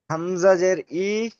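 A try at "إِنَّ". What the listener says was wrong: হামজা জের ই হয় না, নুনের উপর তাজদিদ আছে, তাজদিদ দুবার পড়তে হবে, তা প্রথমে ডান দিকে অক্ষরের সাথে মিলিয়ে পড়বেন। হামজা নুন জের ইন, লামের উপর তাজদিদ আছে, লামটিও দুবার পড়তে হবে। প্রথমে ডান দিকে অক্ষর, ডান দিকে অক্ষর নুন আছে, নুন লাম জবর নাল।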